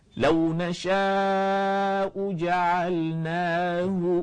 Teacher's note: pangkal di sini keluarnya Hamzah dan ha kata ulama Hamzah ni ha ini adalah huruf yang paling lemah sangat lemah kita tak boleh nak sebut kuat sangat